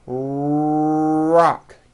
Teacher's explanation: notice how my lips are coming forward and my tongue moves back in my mouth and I push out the are sound watch this rock do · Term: American our sound